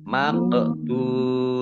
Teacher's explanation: Qaf sukun, bacaan qalqalah, dibaca memantul, ditampakkan pantulannya.